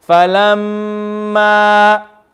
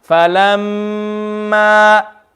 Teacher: noon and meme shadda are read extra longer because of the ghunna. Because these two letters come from the nose.